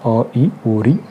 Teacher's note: ह्रस्व स्वर जो होते हैं इनके उच्चारण में एक मात्रा का समय लगता है या फिर कम समय लगता है, और ये 4 होते हैं, अ, ई, उ, ऋ इसके उदाहरण हैं।